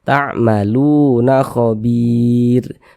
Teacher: Bir dibaca panjang. Ini namanya adalah mad arid li sukun.